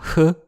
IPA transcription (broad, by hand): h